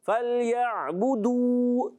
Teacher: پہلے پیش آ رہا ہے تو واو مدہ ہو جائے گا، دو کو کھینچنا ہے، بو کو نہیں کھینچنا ، بعض فَلْيَعْبُدُوا کھینچ دیتے ہیں، غلط کر دیتے ہیں، ایسے